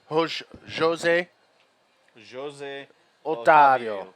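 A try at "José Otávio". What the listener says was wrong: Yes, here in Brazil, the J's are pronounced with a J sound. They're not an H sound like in Spanish.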